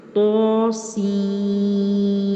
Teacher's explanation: طا کو 1 الف یا 2 حرکات کی برابر اور سین کو 3 الف یا 6 حرکات کی برابر لمبا کریں گے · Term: مد لازم حرفی مخفف